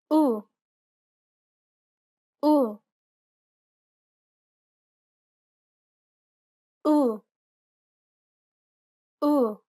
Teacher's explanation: It's identical to the U in put. Be sure to pronounce it nice and short.